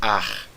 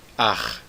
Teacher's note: O carioca falaria, em vez de falar ar, falaria ar, não é? Aquele R bem forçado na garganta. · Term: som do Het